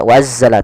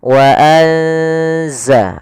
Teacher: Yaitu di sini kita mendapati ada nun yang berharakat sukun atau yang tidak dikasih harakat bertemu setelahnya huruf zai yang mana zai termasuk salah satu huruf ikhfa. Maka cara membacanya itu kita samarkan nunnya kepada huruf zai.